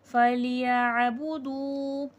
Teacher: واو ساکن سے پہلے پیش ہے، تھوڑا کھینچ کے پڑھیں گے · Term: واو مدہ